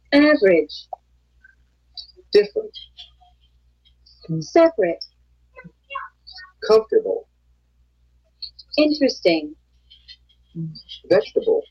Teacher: The vowel immediately after a stressed syllable is sometimes not pronounced. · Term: Unpronounced vowels